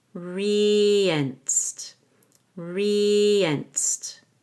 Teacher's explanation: re has a long e and you connect it to the letter e with a y